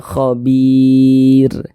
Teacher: Huruf ro tidak dibaca panjang. Karena kita berhenti di huruf yang tidak dibaca panjang, hurufnya kita sukunkan, sehingga dibaca khabir.